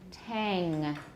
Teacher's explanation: make sure you don't put your lips together it'll turn into an m